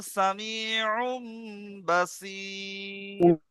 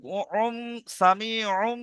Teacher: মিমের দ্বারা পরিবর্তন করে একালিপ গুন্না সহ পড়তে হয়, একে ইকলাব বলে।